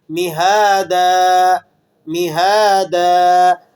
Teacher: اب یہ مہادن کے بعد دیکھیں مہادن میں دال کے اوپر دو تنوین لگی ہوئی ہیں، زبر کی تنوین ہے. تو زبر کی تنوین کو وقف کی حالت میں الف سے بدل دیا جاتا ہے اور تھوڑا سا کھینچ کر پڑھا جاتا ہے